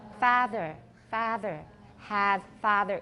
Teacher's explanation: if you listen to educated Scottish English, you will hear that they do not distinguish between a and ah